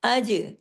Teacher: جیم پہ کلکلا ہوگا، جماؤں کے ساتھ نہیں، ہلاؤ کے ساتھ۔ کلکلے کا مطلب ہوتا ہے ہلا کے پڑھنا۔